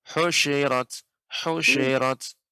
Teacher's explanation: tapi shinnya nggak boleh tasydid, Nek. Bukan husyirat.